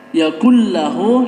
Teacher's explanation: Yakullahu ini tidak dengung ya, bacanya tidak didengungkan, beda dengan idgham bi gunnah. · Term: idgham bila gunnah